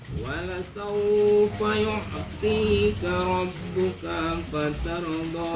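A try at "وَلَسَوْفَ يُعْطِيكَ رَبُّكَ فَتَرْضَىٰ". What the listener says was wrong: Sama kap yang kedua pendek. Wala saufa saunya jangan terlalu panjang. Kak yang kedua kaknya.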